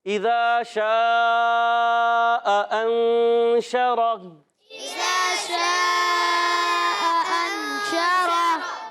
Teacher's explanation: دونوں حمزاؤں کو خوب تحقیق سے خوب ظاہر کر کے ادا کریں گے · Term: حمزہ